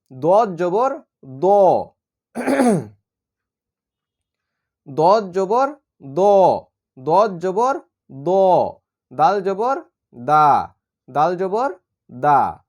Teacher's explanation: হচ্ছে পাতলা হরফ দ মোটা হরফ দাল হচ্ছে পাতলা হরফ তাহলে দ হচ্ছে জিহ্বার গোড়ার কিনারা থেকে উপরে মাড়ির দাঁতের সঙ্গে লেগে উচ্চারণ করতে হবে